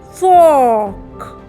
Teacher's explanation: आर की कोई आवाज़ ही नहीं निकलती और ओ की आवाज़ निकलती है ओ या ओ। जैसे यहाँ पे FORK में it will be fork, so there is no R over here, R becomes silent।